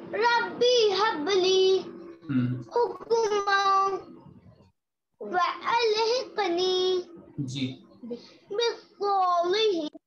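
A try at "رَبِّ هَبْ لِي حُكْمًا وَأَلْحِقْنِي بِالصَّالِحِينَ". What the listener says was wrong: بالصالحين. لام موٹا نہیں ہوتا. بالصالحين. لی کو موٹا نہیں کریں گے بیٹا. صرف سود کو موٹا کریں گے. جس پہ ہم نے کلر کیا نا صرف اس کو موٹا کریں گے. لام کو نہیں موٹا کریں گے. صالحين.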